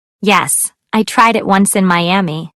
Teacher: Notice how final t and d sounds in verbs are linked to the vowels that follow them. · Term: Linked Sounds